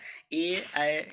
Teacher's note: ए, ऐ, इसका उच्चारण स्थान कंठ तालु हो गया।